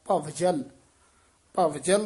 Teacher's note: ਭਵਜਲ ਬਬਾ ਨਹੀ ਲਾਉਣਾ ਵਾ ਪੂਰਾ ਬੋਲਣਾ